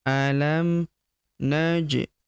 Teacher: Huruf ja berharakat sukun kita pantulkan atau kita qalqalahkan.